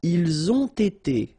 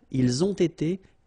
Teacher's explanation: You get first the liaison z and then you get the t.